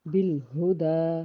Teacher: دال کے اوپر کھڑی زبر ہے، 1 الف کے برابر کھینچ کے پڑھیں گی